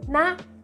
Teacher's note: Tanpa tone mark. Nah, ingat nonu itu adalah konsonan rendah, ditambahkan suku kata mati, dalam hal ini suara a pendek. Jadi dibacanya tinggi.